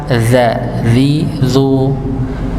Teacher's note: Allazi harusnya allazi, zi, ya, walaupun sama-sama tempatnya, nggih, ujung lidah bertemu dengan ujung gigi seri atas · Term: huruf dzal